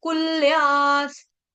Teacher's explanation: कुल्या के आगे जो विसर्ग है उसका उच्चारण आधा स